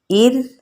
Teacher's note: اب جو ار ہے یہ باریک ہوگا کیونکہ را ساکن سے پیچھے زیر ہے حمزہ کے نیچے، اس لیے یہ را باریک ہوگی